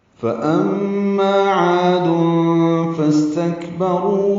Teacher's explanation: فأما فا کو جلدی سے پڑھیں گے، حمزہ کو میم سے ملائیں گے، میم مشدد پہ غنہ ہوگا، آواز ناک کے بان سے ملے جائیں گے، ما الف مدہ ہے، 2 حرکات لمبا کریں گے